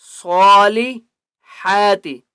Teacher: صالحات، صاد کے اوپر کھڑا زبر ہے اس لیے صاد کو ایک الف کی مقدار کھینچ کر پڑھیں گے اور صاد کو موٹا کر کے پڑھیں گے